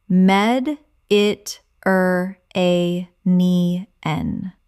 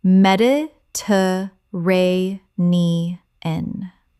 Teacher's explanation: 6 syllables with the stress on the fourth.